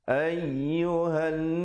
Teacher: ay ditekankan di situ, diberikan stres di situ, di atas ya itu